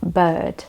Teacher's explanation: if the vowel is placed before the R, most of the time the R is pretty much silenced and you don't really roll your tongue.